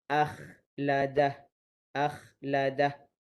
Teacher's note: Huruf isti'la tetapi tidak tebal. Hampir kepada tebal tetapi tidak tebal.